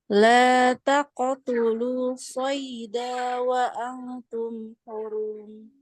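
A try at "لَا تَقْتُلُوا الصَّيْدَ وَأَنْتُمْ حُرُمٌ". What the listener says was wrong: Langsung masuk ke shad. Danya nggak panjang. Jadi nggak boleh panjang.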